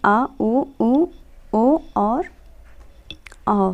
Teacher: पश्च स्वर हैं जिह्वा के पश्च भाग से उच्चरित